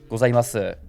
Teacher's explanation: gozaimasu, which is nakadaka, so it should start low, go up and stay level, and then drop